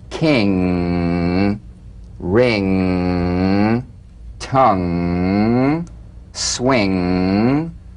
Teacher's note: the ng is a voiced tongue backed soft palate nasal consonant so sing with the back of the tongue in contact with · ng is a voiced tongue backed soft palate nasal consonant so sing with the back of the tongue in contact with the soft palate back of the tongue to the soft palate mmm vibration coming